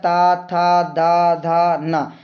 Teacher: जो आपकी जीभ है वो दांत को आपके स्पर्श कर रही होगी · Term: दांत से